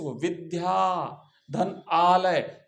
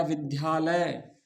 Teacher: तो आ और आ मिलके भी आ बनता है। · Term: दीर्घ संधि